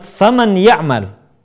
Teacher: akan lebih sempurna kalau sebagian suara kita kita keluarkan melalui rongga hidung. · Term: gunah